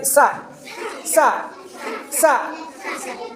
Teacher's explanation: മുൻപല്ലിന്റെ നേരെ നാവിന്റെ തല പിടിച്ചിട്ട്, അതാണ് ചെറിയൊരു കാറ്റ് പുറത്തേക്കുണ്ട്. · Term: സീൻ